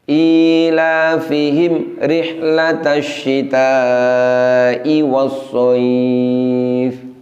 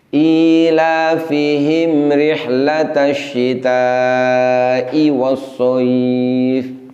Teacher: Ilafihim, mestinya mim sukunnya bunyinya tidak boleh putus atau tertahan, tapi bunyinya tetap mengalir. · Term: idhar syafawi